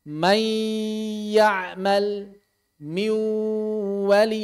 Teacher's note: Jadi, ghunnah dilakukan selama dua harakat.